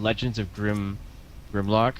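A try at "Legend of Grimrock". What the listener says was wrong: Grim Rock. I did the same thing forever. I kept saying Grim Lock, as in the Transformer.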